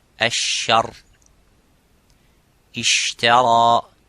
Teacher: The parts touch each other without leaving the gap. But the sheen has a gap, and that let the air slightly go.